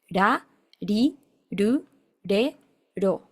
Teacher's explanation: la R del japonés es la R suave del español, no es la R, es ere. Incluso a veces la pronuncian más similar a la L, que ellos no tienen la letra L, la sílaba con L, sino que tienen esta R suave.